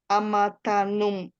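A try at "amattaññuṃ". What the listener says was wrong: Amatanyum, nyum. nyung, not in, not n. There's a specific diacritical mark over here. Amatanyum.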